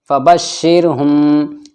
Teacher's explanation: اب را ساکن سے پہلے شین کے نیچے زیر ہے تو یہاں پر یہ را باریک پڑھا جائے گا